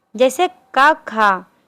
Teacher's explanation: अघोष कंपन नहीं होता इसमें।